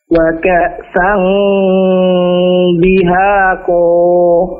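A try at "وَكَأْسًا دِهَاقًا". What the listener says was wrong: Jangan terlalu panjang. Wa ka'san dihaqo.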